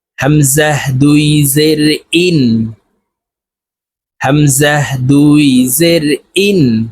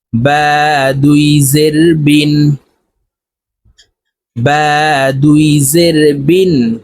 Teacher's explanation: দুই জেরের উচ্চারণ নিচের দিকে ধাবিত করে নুন যুক্তভাবে তাড়াতাড়ি করিয়া পড়তে হবে